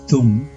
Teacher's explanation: the first letter of Dum is a danta or dental consonant to correctly enunciate this consonant the tip of the tongue must touch the backs of the upper row of the front teeth